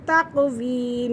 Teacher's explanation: یہاں پہ بھی یا مدہ ہو رہا ہے اور قاف پہ قلقلہ ہو رہا ہے